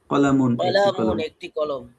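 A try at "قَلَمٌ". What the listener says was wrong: কলা টান হবে না, কলামুন একটি কলম। হ্যাঁ, কলামুন একটি কলম। কলামুন একটি কলম।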